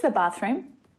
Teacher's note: if the word the is followed by a consonant sound, then it's pronounced the lazy schwa sound